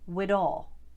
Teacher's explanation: Whether it's the voiced or the unvoiced version of the TH sound, it can often become D in the Boston accent. For example, with an expression like with all, you might hear a Bostonian say wid all. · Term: handling the TH sounds